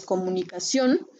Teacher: suena más fuerte en la última sílaba · esta suena más fuerte aquí, en ción